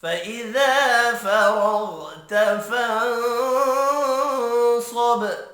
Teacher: فإذا الف مدہ ہے، ایک الف کے برابر کھینچ کر پڑھیں گے۔